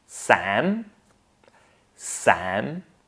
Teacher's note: consider the vowel sound here as eh, Sam. But it can be an eh on its way to ah, but not quite the ah yet